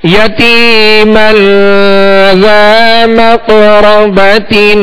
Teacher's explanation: یتیمن پہ غنہ کریں گے, ایک الف کی مقدار غنہ کریں گے, یہ اخفاء کا قاعدہ ہے.